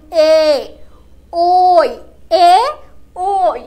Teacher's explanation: আমাদের জিহ্বাটা আমাদের তালুতে গিয়ে ঠেকছে এবং আমাদের গলার উপরে বেশ একটা প্রেসার পড়ছে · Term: কণ্ঠ তালব্য বর্ণ